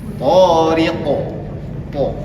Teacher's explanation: Karena tho dengan qof ini ee dia memiliki sifat namanya isti. dan dia tebal th dengan q itu tebal makanya dia agak sedikit bacanya dibulatkan seperti itu.